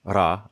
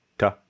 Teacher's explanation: The choice between a flapped coronal ra or an unaspirated t